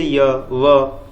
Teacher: जैसे य, व, कोई मतलब आपको प्रयास करना ही नहीं पड़ रहा, ठीक है ना, तो इसको अर्धस्वर भी कहा जाता है कि इनके उच्चारण में स्वरों से मिलता जुलता प्रयत्न करना पड़ता है, इसलिए इन्हें अर्धस्वर भी कहते हैं